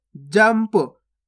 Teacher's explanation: आधा माँ का उच्चारण हुआ ना यहाँ पे, देखो इस प्रकार से आधा माँ पढ़ा अपन ने